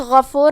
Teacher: غفور میں غین کی ادائیگی حلق کے اوپر والی حصے سے ہے، غین حروف التفخیم میں سے ہے، تو ہم یہ حرف کو موٹی آواز میں پڑھیں گے۔